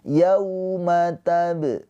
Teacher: Bacanya itu dilembutkan atau dilunakkan ke huruf waw, yau, gitu ya.